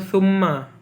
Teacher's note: summa, mimnya gunnah musyaddah karena bertasdid